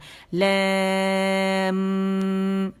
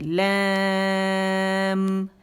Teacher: میم پہ آواز ایک کاؤنٹ کے لیے رکے گی